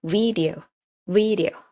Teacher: You have to emphasize the first syllables, which is V. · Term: emphasize that syllables